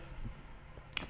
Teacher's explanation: प का उच्चारण करते समय वायु जो होती है वो ओष्ठों से टकराती है या ओष्ठों के द्वारा अवरुद्ध होती है, तो प का उच्चारण स्थान ओष्ठ होता है।